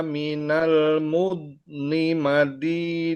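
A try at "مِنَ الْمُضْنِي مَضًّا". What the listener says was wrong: Nah, yang di sini kurang ya. Maldi, jangan madi, lidahnya tarik lagi ke dalam karena lidahnya harus tempelin ke geraham. Maldhidhan, maldhidhan.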